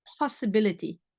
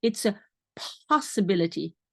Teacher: in English after the P there is some H sound there